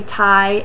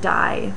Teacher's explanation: Those are both alveolar stops, T and D, and they differ on voicing. T is voiceless and D is voiced.